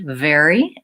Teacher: the V continues in very